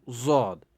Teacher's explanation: زبان کی کروٹ اور اوپر والی داڑھوں کی جڑ سے ادا ہوتے ہیں. یعنی زبان کی کروٹ یعنی اس کو تھوڑا ایسی کروٹ دیتے ہیں اور اوپر والی داڑھوں، اوپر والے جو داڑھے ہیں ان کی جڑ سے ادا ہوتا ہے.